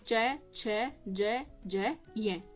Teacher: या फिर पूरा ही ताल यानी कि आप इसको बोलोगे तो पूरा का पूरा कहां से बोला जाएगा आपके तालू से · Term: कठोर तालव्य